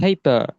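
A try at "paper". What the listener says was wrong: ফেইফা, রটা উচ্চারণ হবে না। ফেইফা। সো এটাকে এইভাবে করে পিটাকে আমরা ফি উচ্চারণ করব, আর আমরা বলছিলাম টিটাকে ঠি উচ্চারণ করব, কেটাকে খেই উচ্চারণ করব, এবং কিউটাকে হি উচ্চারণ করব।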